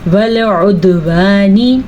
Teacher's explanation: دال کے اوپر قلقلہ ہو رہا ہے اور عین کے تلفظ کا خاص خیال رکھنا ہے، نون سے نی کو بھی لمبا نہیں کرنا.